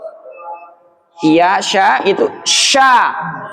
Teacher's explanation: Keluarnya dari pangkal lidah, udaranya menyebar dalam mulut.